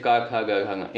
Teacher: क वर्ग के अंतर्गत जो वर्ण आपका आते हैं जैसे क ख ग घ इनका उच्चारण साथियों कहां से होता है? कंठ से होता है।